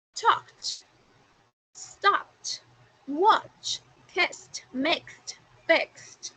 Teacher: we don't create an extra syllable as in talk it